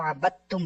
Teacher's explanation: देखा ना, ये आगे उन्होंने कहा कि ये जो जब आबद तुम था तो हिजो में तो हमने दाल का नाम लिया, जब बगैर हिजो के पढ़ा तो आबद तुम बन गया, दाल बीच में से निकल गया